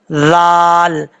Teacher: ذال کو پڑھتے وقت سیٹی سے بچنا ہے، آپ نے ذال نہیں پڑھنا، زا نہیں پڑھنا، ذال نارمل طریقے سے، ذال۔